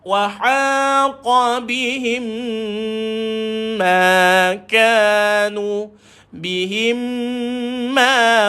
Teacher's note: bila mim jumpa dengan mim, maka kita rapat bibir dan dengung dua harakat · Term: idgham mislaini